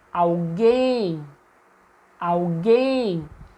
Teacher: Vejam que eu me detenho por mais tempo na sílaba guem. Então, mesmo que essa sílaba não fosse acentuada, nós saberíamos, ao chamar a palavra, que guem é a sílaba tônica.